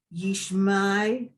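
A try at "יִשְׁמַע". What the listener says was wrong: ayin at the end of Yishma is completely silent. So Yishma.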